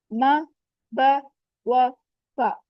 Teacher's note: चार हैं होंठों से म ब व फ